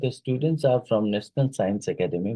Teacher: Mm, the pitch falls actually because this is a declarative statement and that ends with a falling pitch to indicate completion